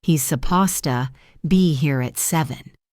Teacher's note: It's almost always reduced to supposed. The D and T merge into one sound. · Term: supposta